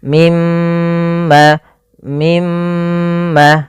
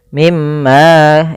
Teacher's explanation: mim berharakat tasdid dan di sini diwarnai dengan warna hijau Artinya kita menahan suara mnya sepanjang dua harakat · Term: gunah